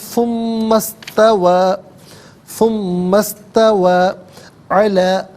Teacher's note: ثم میں میم پر پیش ہے، اسے استوا کی سین کے ساتھ ملائیں گے، اور درمیان میں سے الف یعنی حمزہ کو حذف کیا جائے گا